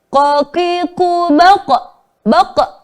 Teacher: Di akhirnya itu diberikan bunyi hamzah sukun. Harusnya tanpa hamzah sukun karena teori ilmu tajwid qalqalah itu hanya memantulkan huruf saja tanpa memberikan akhiran hamzah sukun, ya.